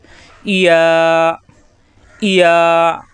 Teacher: ইয়া, জিহ্বার মাঝখানে উপরে তালুতে লাগবে, একালি পরিমাণ টান হবে।